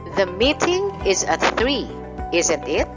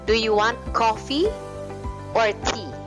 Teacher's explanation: you have the rising intonation followed by the falling intonation. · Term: mixed intonation